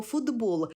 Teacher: глухий ти уподібнився під впливом дзвінкого би до д